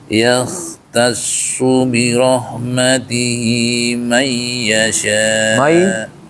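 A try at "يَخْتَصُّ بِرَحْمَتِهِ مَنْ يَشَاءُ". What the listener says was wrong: Mai ditahan. Mai yasha. Kurang. Segitu kurang tahan.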